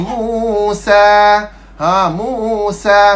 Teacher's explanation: huruf sin, sifat dia safir. Berdesir.